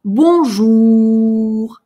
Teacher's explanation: И потянули эту «у» для уверенности, что мы точно ее произнесли.